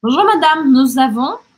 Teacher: Aqui a gente faz a liaison, a gente gruda um som com o outro.